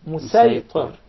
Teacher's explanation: due to reciting with a specific dialect, the Sad will be deliberately pronounced as Sin.